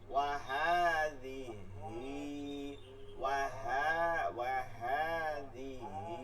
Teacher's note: হা খারা জবর হা, মাদের হরকত একালিফ টেনে পড়তে হবে